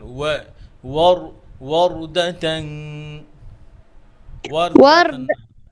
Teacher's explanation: ওয়ার্দা ওয়ার্দা না, ওয়া ঠোঁট গোল করেন